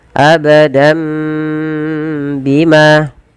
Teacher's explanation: ada mat tabi'i, yaitu fathah bertemu dengan alif. Panjangnya 2 harakat.